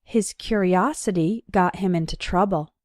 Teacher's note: in the noun form curiosity the third syllable is strong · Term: strong syllable